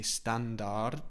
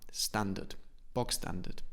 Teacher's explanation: I don't pronounce the R.